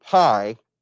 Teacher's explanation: if you say the word pie then you can see where you let out a puff of air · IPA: pʰ